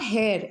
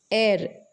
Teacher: although the spelling starts with H, the pronunciation is air. It is not hair, it is air.